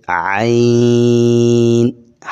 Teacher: گلے کے درمیان سے عین